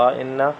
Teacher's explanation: ان نون پہ یہاں پہ نون مشدد کا غنہ ہے